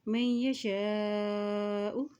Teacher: حمزہ کے اوپر مد ہے تو اس کو لمبا ادا کریں گے